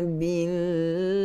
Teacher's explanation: kalimah Allah lafzul jalalah pada lam itu kita baca dengan terqiq, kita baca dengan nipis, kerana sebelum lafzul jalalah huruf dia adalah berbaris di bawah, so kita baca dengan nipis.